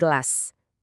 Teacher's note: Pas kita bilang gelas dengan bunyi G, kita nyalain getaran di pita suara.